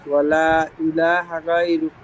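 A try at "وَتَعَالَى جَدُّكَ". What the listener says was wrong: হ্যাঁ, এখানে সবই ঠিক আছে, কিন্তু আপনার ওই যে ওটা আইটা একটু হালকা হয়ে গেছে, একটু বসিয়ে বলতে হবে ওটাকে। চাপ চাপে চেপে ধরে বলতে হবে, ওটা আলা জাদ্দুকা। ওটা আ বলেন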